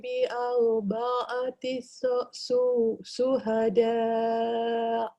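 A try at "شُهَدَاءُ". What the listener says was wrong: Shin dia awak kena betulkan sikit mulut awak. Betulkan sikit makhrajnya. Shu.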